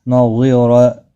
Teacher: ضا مستعلیہ ہے، پر پڑا جائے گا، اور را بھی پر پڑا جائے گا۔